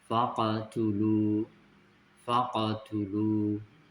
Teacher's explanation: Kemudian yang dibaca tebal huruf th dan qof.